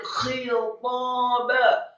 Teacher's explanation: Kemudian minhu, ha-nya dibaca tafkhim tebal menggema di dada, cukup marfu atau dhammah satu harokat saja. Khitaba, ha-nya yang kasrah dibaca serak dan tebal